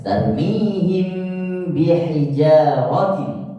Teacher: Kalau ini ikhfa syafawi, ketika kita membacakan mim sukun kita belum masuk ke dalam makhraj yang kedua, hanya di pertengahan.